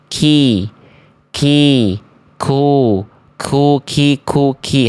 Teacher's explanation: Langit-langit yang lunak dan keras. Sehingga kalau maju saja sedikit ke arah luar, huruf qaf kita jadinya kaf nih. · Nah, jadinya kaf dia. Jadinya keluar percikan nafas.